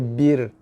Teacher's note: Roh di sini dibaca dengan nipis, bersifat roh nipis. Roh tarqiq, bukan roh tafkhim.